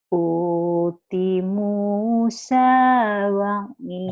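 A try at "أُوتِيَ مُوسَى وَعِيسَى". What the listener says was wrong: Bukan uti, Bu. Uti ya, kan ada baris ini. Uti ya. Uti ya Musa wa Isa. Uti ya Musa wa Isa.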